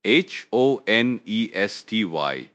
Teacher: The silent H catches a lot of people out.